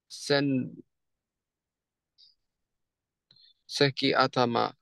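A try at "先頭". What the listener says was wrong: Sento is how it's pronounced. And to is how atama is read when it's married. Like animal counter. Ito. So sento.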